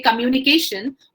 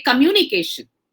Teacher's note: the way we pronounce a word communication mu has the stress on it